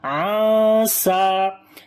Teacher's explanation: After the nun sakin there is seen, we make ikhfa here, which is hiding the sound of noon